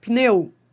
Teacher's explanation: esse P não é mudo. Você tá pronunciando, ó.